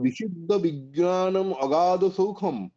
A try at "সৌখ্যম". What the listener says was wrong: সৌখম নয়, সৌখ্যম, ক্ষয় জফলা, সুখ এর ভাব হচ্ছে সৌখ্যম। হুম যেমন মৃদু তার ভাব হচ্ছে মার্দম, দরিদ্র তার ভাব হচ্ছে দারিদ্র্যম, সেই রকম। এর ভাব হচ্ছে সৌখ্যম, দুঃখ দৌখ্যম বলতে পারেন।